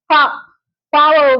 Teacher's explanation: இதழ்கள் இரண்டும் ஒட்டுவதால் பா என்ற எழுத்து பிறக்கிறது